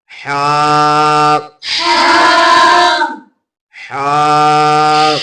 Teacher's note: ہا کو پڑھتے وقت آپ نے سانس نکال کے اسے پڑھنا ہے